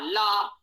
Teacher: ल का उच्चारण दांतों से होगा अर्थात जिब्बा दांतों को हल्का थोड़ा सा स्पर्श कर सकती है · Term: दंत स्थानी